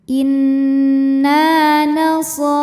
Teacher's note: Sebab ada alif yang sebelumnya berbaris fathah, maka huruf nun kita panjangkan 2 harokat. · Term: mad tabi'i dhahiri